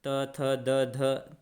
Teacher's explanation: जीभ जो है दांत में टच होती है ना साथियों, इसीलिए दंत व्यंजन कहा जाता है